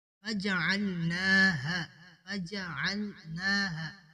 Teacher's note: نون کے اوپر کھڑی زبر ہے، ایک الف کے برابر اسے کھینچیں گے۔